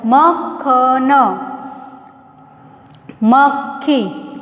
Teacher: यहाँ पे जैसे मक्खी, मक्खन, क और ख, क जो है वह भी बोला जाता है और ख भी बोला जाता है, पर क कैसा होता है, थोड़ा सा धीमा होता है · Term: संयुक्त व्यंजन